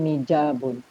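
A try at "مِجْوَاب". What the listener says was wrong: Mijwabun. Alifnya menggunakan wawu. Mizwarun, milwamun, mijwabun.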